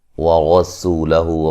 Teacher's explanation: وَرَسُولَهُ، را کو موٹا ادا کریں گے، سین کو باریک سیٹی سے ادا کریں گے، وہ مدہ ہے، ہو مد اصلی ہے۔